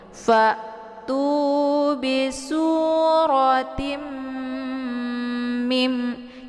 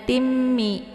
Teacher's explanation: Cara bacanya itu didengungkan. Jadi ditekan dulu ta-nya, kemudian ditahan suaranya 2 harokat, kemudian dileburkan suara ke dalam huruf mim. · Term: idgham bi gunnah